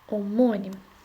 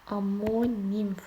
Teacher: Omonim vurğu 2-dədir. Tələffüzüm onda necə olacaq? Amonim formasında olacaq.